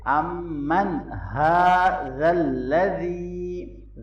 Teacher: امن، میم مشدد پہ غنہ ہوگا، نون ساکن کے بعد ہا حروف حلقی میں سے آ رہا ہے، یہاں ہم اظہار کریں گے امن ھذا الذی، ذال کو نرمی سے پڑھیں گے، یا مدہ ہے اس کو لونگ کریں گے